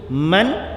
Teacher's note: Man tu sebut bagi letak ujung lidah tu, letak dekat gusi tempat nun mati tu. Man, dengungkan dia, masa dengung tu muncung.